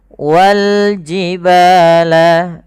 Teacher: Lam qamariyah yaitu alif lam yang kita tulis dan kita baca dengan jelas suara lamnya